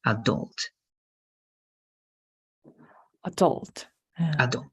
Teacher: This is going to be adult. The stress is going to be in the second part.